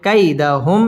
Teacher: কাইদাহুম মিম সাকিন ইজহারে খাস গুন্না ছাড়া পড়তে হবে।